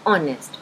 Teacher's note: इसे नॉर्मली लोग हॉनेस्ट भी बोल देते हैं, but it is actually ऑनेस्ट because H in ऑनेस्ट is silent